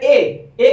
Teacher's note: तो आप जैसे ए की बात करेंगे तो आ और ई से मिलकर के बना हुआ, तो आ का उच्चारण कंठ से हो रहा है और ई का उच्चारण तालु से हो रहा है, तो इसलिए ए का उच्चारण किससे होगा, कंठ तालु से होगा, कंठ से भी होगा और तालु से भी होगा, दोनों चीजों से।